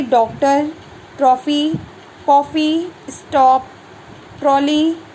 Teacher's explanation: आगत जो ध्वनियाँ होती हैं इनका प्रयोग अंग्रेजी से जो शब्द हिंदी में आए हैं उनके रूप में किया जाता है। इसका उच्चारण आ तथा ओ के मध्य की ध्वनि आ के रूप में होता है।